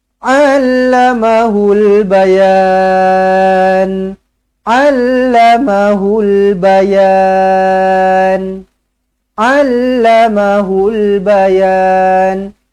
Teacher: Allama semua pendek. hul bayan, yan baru panjang. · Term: Mad arid lisukun